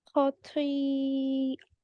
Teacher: make the twa heavier to make it different from the letter da